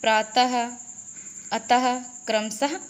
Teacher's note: विसर्ग, इसका उच्चारण हा की तरह होता है